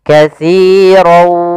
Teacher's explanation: masukkan tanwin kepada huruf waw, maka dia langsung berbunyi waw. Katsirau, ya, tapi dia menyisihkan ada sedikit. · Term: idgham bi gunnah